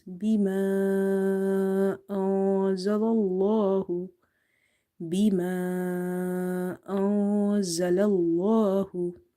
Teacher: So here we will apply the rule of madde munfasil. We have to stretch this alif up to 2.5 counts.